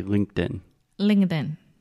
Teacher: in and then when we say it a little bit faster that t gets a little bit softer and faster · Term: stop T